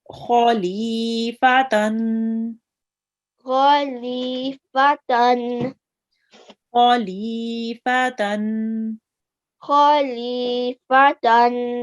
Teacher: Kha is a thick letter, and it will be read with your mouth rounded a bit, and it's going to be read thick and heavy.